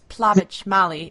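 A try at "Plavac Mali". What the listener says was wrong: Well, it's actually Plavac, which is a little harder to pronounce. It's like a TS sound at the end. And that's the one that really gets most people.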